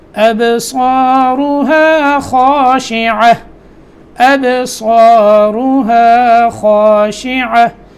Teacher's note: با میں قلقلہ، سواد موٹا اور اس کے بعد الف بھی موٹا. خاشعہ میں خا موٹا لفظ ہے، اس کے بعد الف بھی موٹا